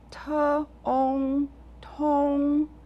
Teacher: Both syllables use the second tone.